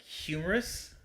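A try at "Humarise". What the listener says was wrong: No, like human, but without the N. Not humor, like laughing.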